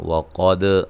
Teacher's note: وقد قاف کو موٹا، دال پہ قلقلہ